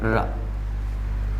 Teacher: जब र का उच्चारण किया जाता है तो एक विशेष प्रकार का कंपन होता है, और विशेष प्रकार के कंपन होने के कारण इसे प्रकंपित के नाम से भी जाना जाता है। · वे व्यंजन जिसके उच्चारण में जिह्वा को 2-3 बार कंपन करना पड़ता है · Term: लुंठित व्यंजन